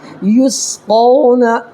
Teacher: واو ساکن سے پہلے قاف کے اوپر زبر ہے تو واو لین ہوگا ، ٹھیک ہے، یسقون، اس کو نرمی سے ادا کرنا ہے،